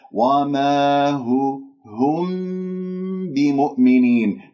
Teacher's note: الميم جاء بعدها باء إذن إخفاء شفوي